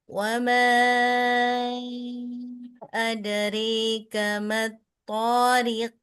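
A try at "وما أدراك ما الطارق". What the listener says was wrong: Kan mat tebal. Mat to. Ulang.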